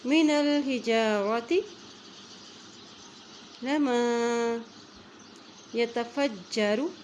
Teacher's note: جیم کے اوپر شد ہے اس لیے فا کی زبر کو جیم کے ساتھ ملا رہے ہیں